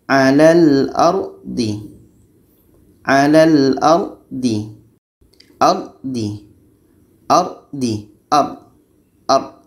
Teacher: atas R mati sebelumnya ada huruf yang berbaris di atas nih R mati sebelumnya baris di atas kita baca dengan tebal